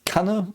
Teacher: It's very short, like the double N. It's always a very short consonant in German if it's a double consonant. So, yeah, Kanne.